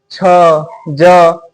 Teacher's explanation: ये सब बोलने पे हमारा जीभ तालू से सटता है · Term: च वर्ग